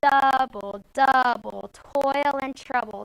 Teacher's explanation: say double the end of bull would not be um accented the first syllable in double is accented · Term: trochaic